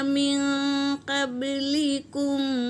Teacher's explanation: نون ساکن کے بعد اخفا کے 15 حرفوں میں سے قاف آیا ہے تو یہاں نون ساکن کا اخفا ہوگا، اور با پر سکون ہے تو یہ خلخلہ کرتے ہوئے ادا کریں گے۔